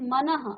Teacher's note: इस विसर्ग को हम आधा ह की तरह उच्चारण इसका करते हैं। आधा ह की तरह।